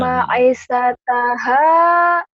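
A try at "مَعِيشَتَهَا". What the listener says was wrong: i-nya panjang ma'i ain ma'isyataha ma'isyataha kemudian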